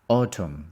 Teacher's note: We don't pronounce the N. It's silence. Autumn. The stress is on the first one.